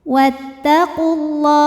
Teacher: Lam pada lafaz Allah atau lam jalalah dibunyikan secara tafkhim. Karena huruf sebelumnya berbaris dammah, maka dibacanya tebal. · Karena alif lam menghadapi huruf syamsiyah yaitu lam, maka alif lam tidak kita baca atau dinamakan dengan idgham syamsi.